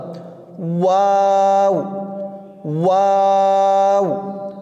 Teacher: দুই ঠোঁটের গোল করে সামান্য খোলা রেখে উচ্চারিত হয় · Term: ওয়াওর মাখরাজ